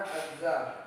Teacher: huruf za seolah-olah hilang sehingga yang dibaca adalah huruf samsiah yang ada setelah alif lam. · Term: alif lam samsiah